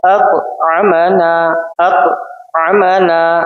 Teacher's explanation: हमजा क़ा जबर अक़, आइन जबर आ, अक़ आ, मीम जबर मा, अक़ अम, नून अलिफ जबर ना, अक़ अमना, अक़ अमना। क़ा की आवाज लौटनी है क्योंकि हुरूफ क़लक़ला है।